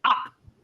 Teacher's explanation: হুম, এটা কোনো কষ্ট করে উচ্চারণ করবো না, একদম ভিতর থেকে আ। হ্যাঁ এটা মানে থ্রোটের একদম নিচের যেটা শেষ মাথা, ওখান থেকে আসবে।